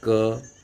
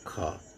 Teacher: का बोलते हैं तो आपको कम श्वास छोड़ना पड़ता है, लेकिन ख बोलते हैं तो उससे अधिक श्वास छोड़ना पड़ता है